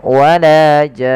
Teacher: Mad Alif sukunnya dipanjangkan enam harakat · Nah, di sini mad arid disukunnya dipanjangkan 6 harakat, Baru untuk nunnya karena dia ada gunnah sambil ditahan ya, maka wala jan, tidak wala jan, tapi dia ada ya, wala jan, seperti itu. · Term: mad lazim